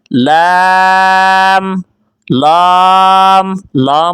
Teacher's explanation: لام یاد رہے اس کو لا نہیں کرنا. لام، لام، لام موٹا ہو جائے گا.